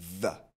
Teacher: lorsque vous produisez ce son the, la gorge vibre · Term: voiced TH sound